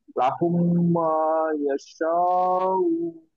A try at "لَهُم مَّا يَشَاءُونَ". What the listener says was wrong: সারটা আর একটু টানতে হবে।